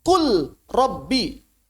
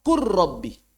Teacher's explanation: Kul Rabbi. Maka ternyata lamnya berubah jadi ro. Kur Rabbi.